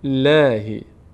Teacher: للی باریک هم خونده میشه پر نمیشه چون اینجا کسره داریم قبلش